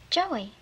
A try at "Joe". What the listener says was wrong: No, not Joey. Joe. The E is silent, right.